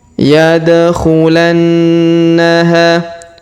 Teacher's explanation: Huruf da berharokat sukun, maka kita pantulkan atau kita qalqalahkan. · Huruf na berharokat tasdid, maka kita tahan dan kita tekan, kemudian kita dengungkan 2-3 harokat.